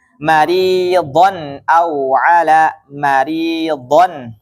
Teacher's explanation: dibaca jelas n karena setelahnya Hamzah